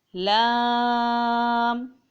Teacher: لام کو بھی 5 الف کی مقدار کھینچ کے پڑھا جائے گا